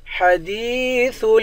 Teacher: دال کو یا کے ساتھ ملا کر یا کو ایک الف کے مقدار کھینچ کر پڑھیں گے، یا حروف مدہ ہے.